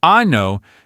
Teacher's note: If you pronounce the word anno with a long, open ah sound, you are, well, let's just say you're referring to a certain part of the human body. But if you shorten that vowel and you say anno, you're talking about a year. So that one tiny vowel sound is the difference between asking for the year and, well, asking for something completely different.